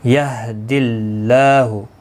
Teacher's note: اللہ کا لام زیر کی وجہ سے باریک پڑا جائے گا، اس کے اوپر کھڑی زبر بھی ہے، ایک الف کی مقدار کے برابر کھینچ کر پڑھیں گے.